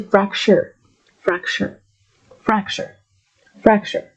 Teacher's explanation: There's a T here, but to make it sound native, you might want to drop the T in your pronunciation. So just say fracture.